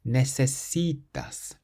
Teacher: So we stress the C, which is the syllable before last.